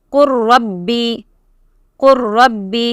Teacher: So idgham mutajanisan, and you will drop the lam and read only ra.